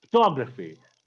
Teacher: Photography, we stress the second syllable.